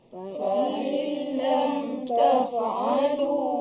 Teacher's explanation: Yang pertama, fa'il lam idgham bila gunnah, masukkan bunyi nun ke dalam lam